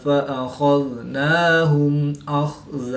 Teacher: میم ساکن کے بعد حرف با اور میم کے علاوہ حرف حمزہ ہے تو یہاں پر میم ساکن میں اظہار شفوی ہوگا، یعنی غنہ نہیں کریں گے بلکہ میم ساکن کو ظاہر کر کے پڑھیں گے۔